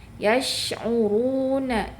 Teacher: Jadi pangkal lidah harus dinaikkan pada saat pelafalan huruf ro. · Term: ro dibaca tebal